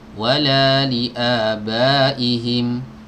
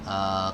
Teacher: Li'aba, ba dipanjangkan antara 4 sampai 5 harokat